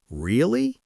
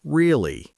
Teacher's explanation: English speakers say really with a rising tone to show surprise or really with a falling tone to show disappointment.